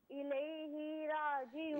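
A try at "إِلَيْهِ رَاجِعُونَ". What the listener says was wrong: इसमें हा को ना खींचें, इलैहि राजिऊन। इलैहि नहीं, इलैहि राजिऊन। इससे बिल्कुल ना खींचें, जो हा है ना इसके नीचे जेर है, इसे खींचे नहीं। इलैहि राजिऊन।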